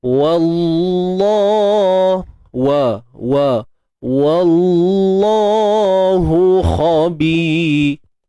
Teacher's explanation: Seterusnya kalimah Allah kita baca dengan tebal, kerana sebelumnya baris atas wa. Tebalnya pada Allah sahaja. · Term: tebal taghliz